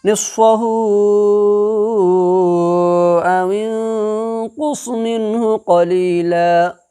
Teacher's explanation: 2 से 2.5 अलिफ के बराबर खींच करके पढ़ेंगे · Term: मद्दे मुनफ़सिल